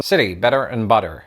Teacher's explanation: T flapping is of course highly common in American English, where words like city, better and butter often become city, better and butter.